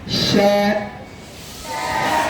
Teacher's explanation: শিনের মধ্যে সফির নাই, শিনের মধ্যে আছে তাফাশি। কি আছে? তাফাশি। আওয়াজটা ছড়ায় যাবে, শাঁ শাঁ শব্দ হবে।